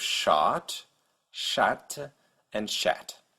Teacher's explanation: the French variant ah is a little more forward in the mouth than the American a so your tongue is a little more towards the front of your mouth about halfway towards the American a so you have shot shat